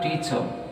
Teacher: But I should not pronounce all the syllables in the word teacher in the same way. So I may take stress on the first syllable T, and whereas there is no stress on second syllable cha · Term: word stress